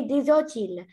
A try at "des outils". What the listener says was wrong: Non, ما نقولوش des outils. نقولوا des outils. On ne prononce pas le L à la fin.